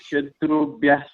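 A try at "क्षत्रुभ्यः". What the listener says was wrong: Kshatrubhya, you know, it is KSH. If you put KSH, what will be the pronunciation? You have Kshatrubhya. Kshatrubhya.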